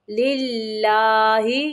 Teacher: یہاں پہ اللہ کلام باریک پڑھنا ہے